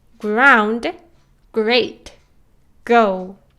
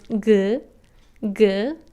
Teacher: apart when pronouncing words with G for example ground great go there is very little air coming from your mouth when you pronounce good good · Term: G sound